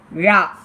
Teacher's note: நாவின் நுனி மேல் நோக்கி வளைந்து வருடுவதால் ழகரம் தோன்றும். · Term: சிறப்பு ழகரம்